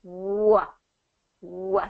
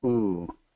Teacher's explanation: So what happens with the W is it's tighter. It's a little bit tighter and it comes out. So your lips are tighter, rounder. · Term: W sound